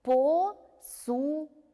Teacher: Конечно же, ударение падает на гласную «у».